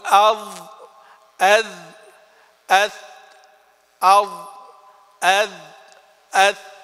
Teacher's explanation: تخرج الظاء والذال والثاء من طرفي اللسان والثنايا، يعني من طرفيهما الاثنين مع بعض، من طرف اللسان مع طرف الثنايا